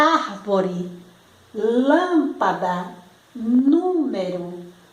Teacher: a sílaba tônica é a antepenúltima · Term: proparoxítonas, proparoxítona